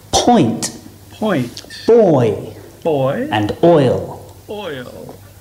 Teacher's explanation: is a combination of o they're on different rows again but the shape of our lips and the position of our tongue also change a lot because we're going from the right all the way to the left going from rounded lips to unrounded starting on the or and finishing on the e as in